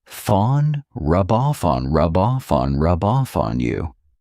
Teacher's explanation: So I'm saying those 3 words as one rub off on. So here I'm taking the F from off and I'm adding it on.